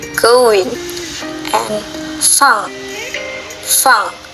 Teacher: Oral passage is blocked by pressing the back of your tongue against the soft palate, velar.